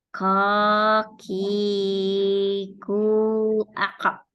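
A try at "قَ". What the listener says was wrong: Kayaknya belum, masih. Mundur lagi, Mbak. Belum tebal itu. Belum naik tebal kayaknya.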